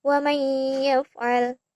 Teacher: penggabungan atau memasukkan bunyi nun mati atau tanwin ke dalam bunyi huruf idgham bihuna